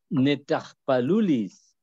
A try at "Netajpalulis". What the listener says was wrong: Muy bien, netajpalulis.